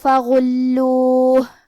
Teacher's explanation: کلمت فغلوہ یہاں حرف الغین ہے اور غین کو ہم حلق کے اوپر والے حصے سے ادا کریں